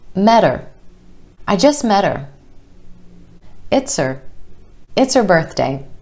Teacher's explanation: Again, we drop the H here and it becomes er.